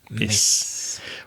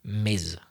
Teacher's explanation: I'm exaggerating the vibrating sound, the Z, like a B, Ms.